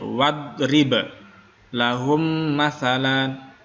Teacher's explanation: Tidak memantul, bukan wad. Hanya ba-nya ini dia memantul.